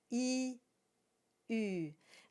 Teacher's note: So start with the dur sound, and the U is not in the English language, so it's very hard for non-francophones. So you begin with an E sound, E, and you round around it. So it follows the same core sound, which is E, but when you round around it, you get U.